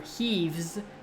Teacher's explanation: So if you say heafs, the voiceless f is what is determining the fact that you're doing an S sound next. But for heaves, the voiced v is determining why you're doing a Z for the next one